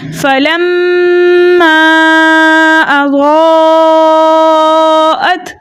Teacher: چونکہ میم مشدد تھا اس لیے ہم نے اس کو حرکتین مقدار غنہ کے ساتھ پڑھا